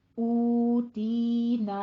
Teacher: اس کو نا نہیں کہنا، ناک میں آواز نہیں جانی چاہیے